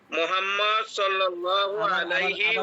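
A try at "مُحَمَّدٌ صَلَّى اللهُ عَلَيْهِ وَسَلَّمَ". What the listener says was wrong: আবার ভুল হয়ে গেল, আবার ভুল হয়ে গেল, মানে ভুল হয়ে গেল ভাইজান। পরের অংশটুকু ঠিক বলেন, কিন্তু মোহাম্মদ বলছেন, মোহাম্মদ বলা যাবে না, বলতে হবে মুহাম্মাদুন সাল্লাল্লাহু আলাইহি ওয়াসাল্লামা।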